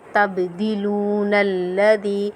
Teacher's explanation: تبدلون الذی، واو مدہ ہے، واو مدہ جب بھی واو ساکن کے بعد کسی واو ساکن حالت میں ہو اور اس سے پہلے والے حرف کے اوپر پیش ہو تو ہم واو مدہ ہوگی، واو مدہ ہوگی، اور واو مدہ کو ہم ایک الف کی مقدار کھینچ کر پڑھیں گے